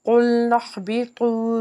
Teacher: قُلْنَا اهْبِطُوا، قاف جو ہے حرف مستعلیہ کا حرف، اس کو پر پڑھیں گے، نون کو ہا سے ملائیں گے، ہا حرف حلقی کا حرف ہے، حلق کے نچلے حصے سے ادا کریں گے